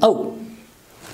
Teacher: The next one is au, very important sound and very commonly used in English words. It's the starts with schwa sound and it ends with u. If you combine both the sound, it becomes au.